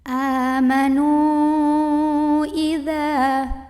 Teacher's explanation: Kemudian hamzahnya yang i pada kata idza. Maka nunnya ini dipanjangkan boleh 4 boleh 5 harokat. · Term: mad jaiz munfasil